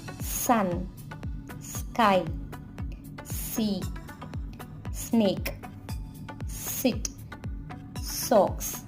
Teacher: Sound is voiceless and there is no vibration in your throat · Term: S sound